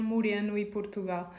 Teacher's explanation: Portugal and Moreno, we have their closed kind of pronunciation of the O.